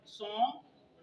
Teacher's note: गाफ नहीं पढ़ना, नून गुना से आवाज अदा करेंगे, ये वर्ड हो जाएगा सॉन्ग।